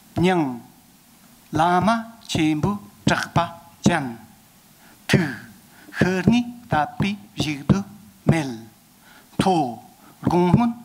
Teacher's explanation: When scanning a line for rhythm, the first and the last syllables are read on their own. A slight pause of breath follows the first syllable and precedes the last syllable of a line. The remaining six syllables in the middle are read in pairs.